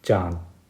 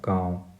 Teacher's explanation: इसका जो उच्चारण होता है नाक और मुंह दोनों से होता है। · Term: अनुनासिक